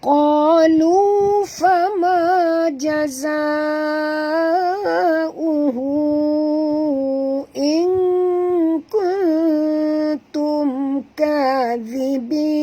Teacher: Qa tebal, jangan baca ka.